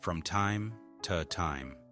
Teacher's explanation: The toe can be reduced to tuh.